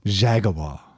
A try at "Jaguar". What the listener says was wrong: you gotta add syllables. Jaguar.